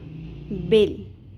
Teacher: لام ساکن میں قلقلہ ہم نے نہیں کرنا، اکثر لوگ یہی مسٹیک کرتے ہیں